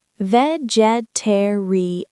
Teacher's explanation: five syllables stress on the third